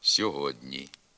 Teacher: передньоязиковий приголосний д стоїть перед пом'якшеним передньоязиковим н і тому сам м'якшиться